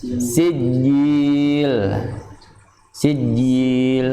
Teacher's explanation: Huruf sin mempunyai sifat hamas, ja mempunyai sifat jahar.